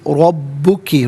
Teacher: را پر زبر ہے، را کو پر کر کے پڑھا جائے گا